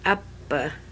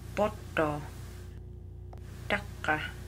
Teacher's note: Now you notice in each of these words there's a consonant in the middle that's kind of lengthened and kind of just held out for a little bit.